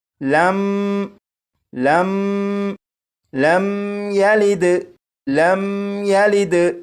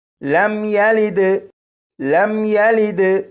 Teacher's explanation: اس میم ساکن پر غنہ نہیں کریں گے اور اسے اس طرح نہیں پڑھیں گے لم لم لم یلد لم یلد، اس طرح نہیں پڑھیں گے، بلکہ اس طرح پڑھیں گے لم یلد لم یلد۔